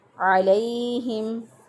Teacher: आइन को वस्ते हलक से अदा किया, गले के दरमियान से अदा किया